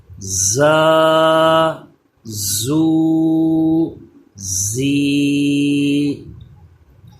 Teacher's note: زبان دانتوں سے پیچھے رہے، تھوڑا دبا کے جیسے پڑھتے ہیں ایسے اس کو پڑھا جائے گا، اس پہ سیٹی پیدا ہوگی۔ زا، الف زبر زا، زا، واو پیش زو، زا یا زیر زی، زا زو زی۔